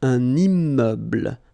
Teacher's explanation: I'm making this little liaison between the two